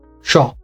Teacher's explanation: your back of the tongue will be touching the hard palate on the top